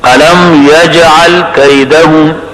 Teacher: یج میں جیم کے اندر شدت بھی ہے, قلقلہ بھی ہے لازمی